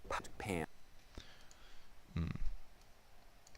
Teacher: Too much wind behind that P.